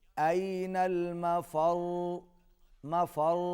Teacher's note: را کے اوپر تشدید ہے، یہاں پر آواز را کی آواز ہم تھوڑی سی دیر کے لیے جاری رکھیں گے